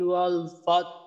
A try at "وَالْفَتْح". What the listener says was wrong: এই প্রথম আয়াতে এই হার যে উচ্চারণটা আছে এইটা আরেকটু স্পষ্ট করা দরকার। ওয়াল ফাতহ, ওয়াল ফাতহ। বাতাসের সাথে হা উচ্চারণের সময় বাতাস বের হয়, ওই বাতাসের সাথে একটু আওয়াজ থাকবে। ওয়াল ফাতহ।